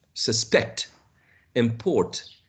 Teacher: if you change the stress to the second syllable we get a verb